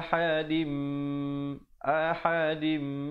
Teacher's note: didengungkan di situ 2 harakat. Tanwin bertemu mim, idgham bi gunnah di situ.